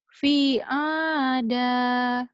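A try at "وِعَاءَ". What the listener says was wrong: Bukan fi, tapi wi. Wi-nya panjang. Wi'ada.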